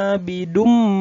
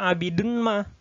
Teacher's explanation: Jadi bunyi tanwin itu dimasukkan ke bunyi mim. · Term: idgham bi gunnah